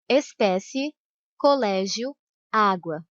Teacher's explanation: Vai do som mais fraco, que é a semivogal, para o som mais forte, que é a vogal. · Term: ditongo crescente